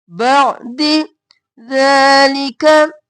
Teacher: ذلك لعلكم تشکرون بعد نہیں کرنا عین بعد بھی نہیں کرنا عین کو ساکن رکھنا ہے گلے کے درمیان سے نکالنا ہے